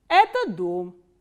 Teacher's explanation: we start from a medium pitch and it goes down towards the last stress syllable.